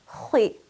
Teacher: Kha carrying a kasra will be pronounced as khi. Notice that I'm still rounding my mouth and filling it with air, even though it has kasra. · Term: kha with the vowel kasra